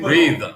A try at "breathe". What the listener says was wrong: Forget to put the tip of the tongue at the end.